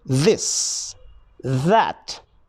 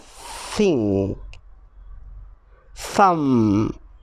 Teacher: are made by sticking out your tongue and blowing out air the only difference is whether or not you use your voice while you blow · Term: voiced th sound